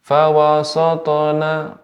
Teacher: pengucapan sin fawasat tidak tebal. Jadi tetap pada huruf ya pengucapannya tipis.